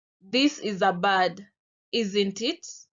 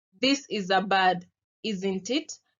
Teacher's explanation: So my intonation first falls and then rises. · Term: fall rise intonation